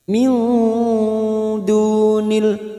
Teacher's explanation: nun sukun bertemu dal ikfa hakiki, kita samarkan bunyi nun sukun dan mendengung selama 3 harokat atau 2 harokat